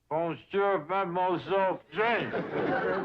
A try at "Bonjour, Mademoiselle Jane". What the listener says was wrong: That's very good, except for the mwah sound. It must be soft. Mwah. Watch my lips closely. Mwah.